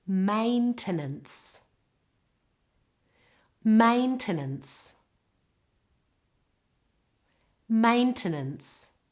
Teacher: It's on the first part of the word. And the first part has a diphthong or double vowel A, but the other two vowels become very weak